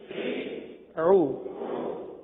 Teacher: وسط حلق سے ادا ہونے والا یہ حرف عین ہے